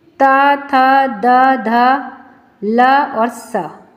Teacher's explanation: इन सभी में हमारी जीभ दांतों से स्पर्श करती है तो ये दंतया वर्ण हो गए।